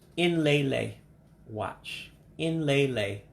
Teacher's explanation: remember the E's take on an A sound